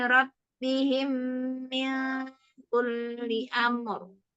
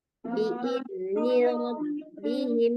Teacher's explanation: ada ini mim mati bertemu dengan mim. Nah, dengungkan dulu ya.